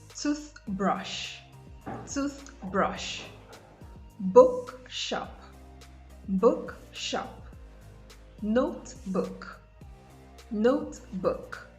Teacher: in compound nouns nouns formed by merging two nouns together you have the stress on the first noun